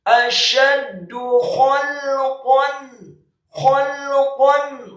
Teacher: kha-nya dibaca tafkhim, tebal dan serak, fathah 1 harokat, kemudian lamnya disukunkan dan qafnya dibaca tafkhim, tebal, fathah tanwin, bertemu dengan huruf khalqan a.